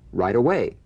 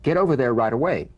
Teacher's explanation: the final T when it's followed by a word beginning with the vowel again it becomes in effect a medial t